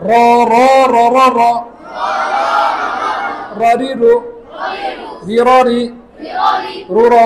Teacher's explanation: জিহ্বার আগার উল্টা পিঠ লাগে